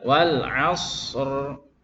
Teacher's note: Shad rakhawah disempurnakan, baru ra bainiyah tebal.